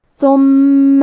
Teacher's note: کلمت ثم میں حرف المیم کی تشدید کو ظاہر کریں گے اور اسے 2 حرف کے برابر پڑھیں گے۔